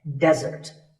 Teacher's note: Here, the stress is on the first syllable, which is de